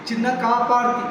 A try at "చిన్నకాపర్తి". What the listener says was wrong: పా కాదు, పాక్ దీర్ఘం వద్దు. పా కాక్ దీర్ఘం పెట్టు, పాక్ దీర్ఘం ఉంది.